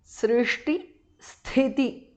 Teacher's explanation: Srishti Sthiti, the first thi is Mahapranah.